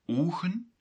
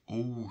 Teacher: the dutch people would add a w or sometimes a g